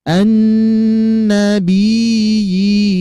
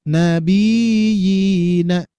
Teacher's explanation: Maka dari itu perlu penjelas, perlu penegasan pada pengucapan ya bertasydidnya. Karena sering terjadi ya bertasydidnya menjadi mad ya.